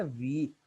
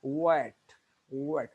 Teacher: अगर आप महसूस करें अपने इसको लिप्स को पकड़ कर देखें, तो आपके लिप्स साइडों की तरफ फैलते हैं